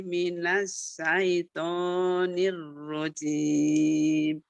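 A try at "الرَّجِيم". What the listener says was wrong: Jim, ya hurufnya jim, bukan zim, tapi jim.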